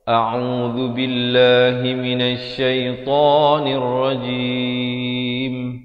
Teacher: Lafaz isti'azahnya itu hamzah di pangkal kerongkong. Ain di pertengahan kerongkong · Mestilah jim itu sekurang-kurang 2 harakat dan di akhir baru ditutup rapatkan mulut bagi menyempurnakan huruf mim